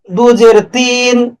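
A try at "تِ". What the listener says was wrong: একটু টান হয়ে গেছে, একটু টান হয়ে গেছে। ত দুই জের তিন, তিন,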